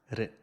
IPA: ɾ